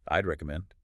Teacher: And the way we pronounce it is just one single sound. We blend the I with a soft D. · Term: contraction